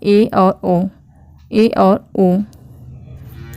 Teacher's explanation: फिर अर्ध संवृत्त स्वर आते हैं, तो इसमें है ए और ओ, ए और ओ। इन स्वरों को बोलने में हमारी जीभ का आधा हिस्सा किनारे से थोड़ा थोड़ा सा ऊपर को उठता है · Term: अर्ध संवृत स्वर